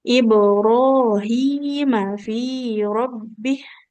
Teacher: mimnya fathah nggak ketemu alif, maka nggak boleh kita panjangkan